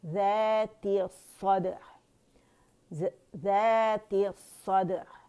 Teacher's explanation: عین کا توسط شو کریں گے, عین باریک سے موٹا نہیں کریں گے